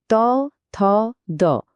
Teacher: ত, থ, দ বলার সময় জিহ্বার ডগাটা সোজা গিয়ে ওপরের পাটির দাঁতের গোড়ায় লাগছে। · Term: দন্তধ্বনি